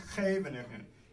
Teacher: Yeah, so one of the things that makes this hard to pronounce is that in Dutch, most CHs and Gs get pronounced ch, that thing in the back of the throat